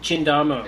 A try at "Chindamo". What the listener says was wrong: CH in Italian is a K sound.